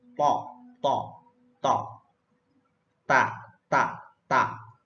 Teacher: Ujung lidah bertemu dengan gusi atas, yaitu huruf to dan ta. Ujung lidah bertemu dengan gusi atas, to, ta.